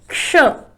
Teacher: क्ष, अब ये जो क्ष है ना, इसमें सबसे पहले आप करते हैं क का उच्चारण, आधे क का, थोड़ा सा क बोलना होता है पहले, उसके बाद फिर आप करते हैं श का उच्चारण, मूर्धन्य श, और ये 3 वर्णों से बना है क्ष। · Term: संयुक्त व्यंजन